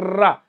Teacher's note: वो जो जीभ है वो मसूड़े से टकराएगी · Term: वत्सर्य